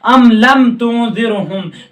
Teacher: میم ساکن کے بعد تا جو آ رہا ہے وہ ظاہر کر دیا گیا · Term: اظہار شفوی